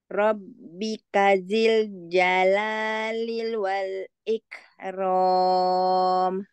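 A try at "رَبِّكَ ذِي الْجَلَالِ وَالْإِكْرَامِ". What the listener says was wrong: Tinggal ini li, jangan ada lil. Tadi terdengarnya lil.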